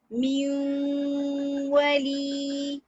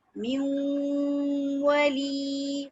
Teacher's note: नून की भी आवाज आ रही है और वाव की भी आ रही है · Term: इदगाम इनकम्प्लीट